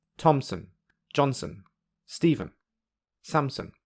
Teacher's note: You can hear that, for the first two phrases, there are short gaps between the strong beats. However, because there are more unstressed syllables in the third and fourth phrases, there is no gap between the strong beats.